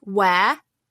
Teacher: the word where we almost don't say the R. Like, it's an open-ended vowel sound, where. It's really hard for an American to replicate that because where has such a hard R sound.